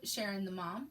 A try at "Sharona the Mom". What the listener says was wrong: Sharona the Mom. There's an A in there.